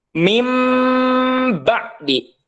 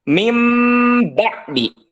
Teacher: nun atau tanwin ini dirubah menjadi huruf mim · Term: iqlab